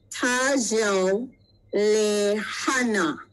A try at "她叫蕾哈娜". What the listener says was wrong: Yeah, 她叫蕾哈娜。Okay, very good.